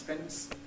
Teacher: Well, that's an epenthetic T. Whenever you have N plus S in the same syllable, in American English and to a considerable extent in British English, you get an epenthetic plosive.